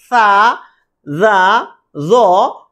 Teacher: জিহ্বার আগা ও সামনের উপরের দাঁতের আগার সাথে লেগে সা, জা উচ্চারণ হবে